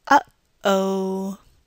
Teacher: you can feel that we stop the airflow right there in the middle and then release it again · we make a glottal stop right in the middle of the word, stopping the airflow at the end of and then releasing the glottal stop and letting the air pass through the glottis again for the O.